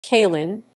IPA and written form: kəˈli:n (Călin)